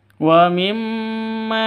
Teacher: mim tasydidnya berdiri sendiri artinya dengung dua ketukan ghunah musyaddadah terus maanya Ma panjang dua ketukan karena ada Alif diawali dengan